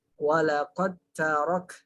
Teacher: karena tempat hurufnya sama, jadi seolah-olah da-nya ini kita samarkan, tapi bukan dihilangkan ya. Walaqad tarok, dan nggak boleh dikol-kolahkan ya, walaqad tarok. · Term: mutaqaribain